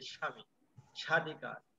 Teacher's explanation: বফলা আসার কারণে সেই বফলা উচ্চারণ হয়নি, কিছুটা শাসাঘাত দিয়েছে।